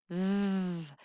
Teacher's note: In the voiced TH, th, you can feel your vocal cords turn on.